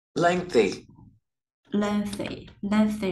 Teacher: Mình phải ngân cái âm ngờ vô trong một xíu, ngân dài một xíu.